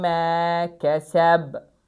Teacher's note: Buradakı b-da da qəlqələ baş verir, lakin burada birinci ayədə şəddə var idi deyə qəlqələ daha şiddətli idi.